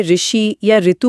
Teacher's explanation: आम बोलचाल में ऋषि या ऋतु बोलते समय हम इसे काफी लंबा खींचते हैं। सुनने में तो ऐसा लगता है जैसे इसमें काफी टाइम लग रहा है।